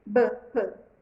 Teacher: essas são as bilabiais, porque os dois lábios se encostam.